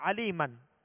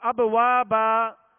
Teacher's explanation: اس کا طریقہ یہ ہے کہ آخری حرف پر علی من، میم کے اوپر دو زبر کی تنوین ہے تو الف سے بدل کر ایک الف کی مقدار میں کھینچ کر وقف کریں گے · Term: وقف کا طریقہ